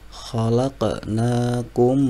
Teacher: huruf mim bertemu dengan mim maka dibaca idgham idgham misli atau idgham mutamasilen maka bacanya dengan berdengung juga